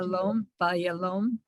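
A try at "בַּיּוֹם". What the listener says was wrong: Not le. There's no lamed there. Ba, yom.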